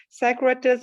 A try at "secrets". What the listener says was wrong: Shorten it out next time, okay? A little bit shorter.